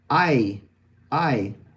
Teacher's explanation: we start with the Spanish A, and we go up to the top front E, I. And even, so then, let's see, A, E, let's see, oh, I.